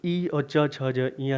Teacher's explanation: जो ई और च छ ज इया है इनका तालु से होता है